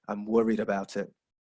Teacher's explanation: so you have a falling intonation to show that you're worried about something